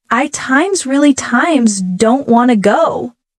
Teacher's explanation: The word really is stretched and emphasized.